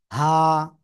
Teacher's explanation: গলার শুরু থেকে উচ্চারণ হবে হা এক আলিফ টান হা ঠিক আছে হা ওকে সবাই এটা